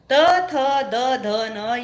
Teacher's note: यांना दंतव्य म्हणतात यांचा उच्चार करताना जीभ दातांना लागते